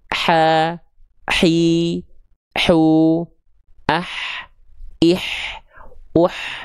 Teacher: Perhatikan setiap ada bunyi vokal i keluar tengah lidahnya naik.